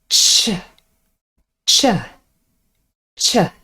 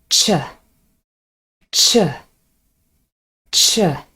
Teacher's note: we also call this an unvoiced alveopalatal affricate sound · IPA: tʃ